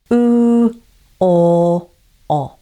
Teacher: Now, say these back vowels. Remember, your tongue is in the back of your mouth, but this time your lips are rounded